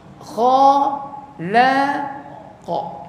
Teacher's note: Dia kha tebal isti'la, la nipis jadi istifal, qa balik jadi isti'la balik. Pakai lidah kita naik turun naik. Kha la qa. Naik mula.